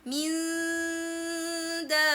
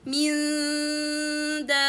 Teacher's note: the tongue should be away from the noon articulation point and closer to the dal articulation point, not touching anywhere, and the sound comes from nose freely without any problem.